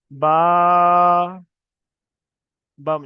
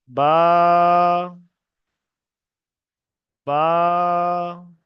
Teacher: বাটা একালি পরিমাণ টান দিয়ে পড়তে হবে।